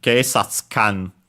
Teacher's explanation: the tsu could be pronounced as with the vowel barely heard if at all · we would could move the accent on the previous syllable, and so on the sa